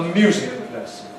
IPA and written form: ˈmjuːzɪk ˌlesn̩ (music lesson)